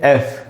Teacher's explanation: ऊपर के दांत नीचे के होठों पे लगने चाहिए और हवा का एक झोंका बाहर निकलना चाहिए।